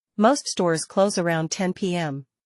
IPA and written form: moʊst stɔːrz kloʊz əˈraʊnd tɛn piːˈɛm (Most stores close around 10 p.m)